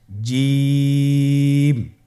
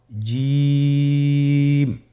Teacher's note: এর মাখরাজ হলো জিহ্বার মধ্যখান তার বরাবর উপরের তালুর সঙ্গে লাগিয়ে উচ্চারিত হয় আপনারা পিকচারে ছবিতে দেখতে পাচ্ছেন যে জিহ্বার মধ্যখান তার বরাবর উপরে তালের সঙ্গে লাগিয়ে উচ্চারণ করতে হয়।